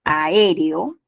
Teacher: la A y la E se separan, la E y la O se separan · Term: hiato simple